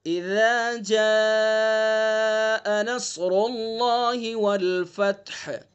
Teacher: زبان کی نوک اور ثنا علیہ کا کنارہ یہ اس کا مخرج ہے، وہاں سے ذال کو نکالنا ہے